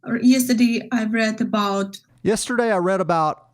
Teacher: the T at the end of about is another one of those consonants that people don't usually pronounce.